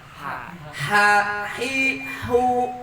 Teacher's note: huruf ha ha juga masih ada di tengah-tengah tenggorokan